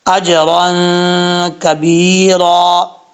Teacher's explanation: با کے بعد یا ہے، اس کو ایک الف کی مقدار لمبا کر کے پڑھیں گے · اجرن، 2 زبر کے بعد کاف آ رہا ہے اور نون تنوین ہے، نون تنوین کے بعد کاف آ رہا ہے حروف اخفا میں سے، تو یہاں پہ ایک الف کی مقدار غنہ کر کے پڑھیں گے، نون تنوین کا اخفا کریں گے۔